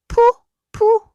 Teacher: 입술을 다물었다가 바람과 함께 터트리는 소리예요